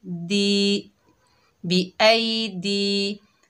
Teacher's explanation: दाल के नीचे ज़ेर है, आगे या साकिन है, ये या मद्दा है। एक अलिफ की मिकदार खींच कर पढ़ेंगे